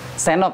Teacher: Diulangin senok, D-nya dihilangin.